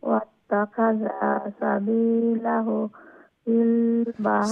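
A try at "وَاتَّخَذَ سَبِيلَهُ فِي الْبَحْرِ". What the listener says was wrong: সাবিলাহু যে হু লম্বা হবে না, উল্টা পেশ তো। এই যে হারকাতের বেলায় যেগুলা আছে ওইগুলা খাটো রাখতে হবে।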